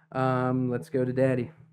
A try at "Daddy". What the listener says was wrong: Yeah, you know, enunciate that D a little better.